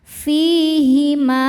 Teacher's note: Fi hukumnya mad thabi'i dzahiri karena ada ya sukun sebelumnya kasrah. Cara bacanya panjang dua harakat.